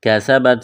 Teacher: سین میں سیٹی کی آواز پیدا کریں گے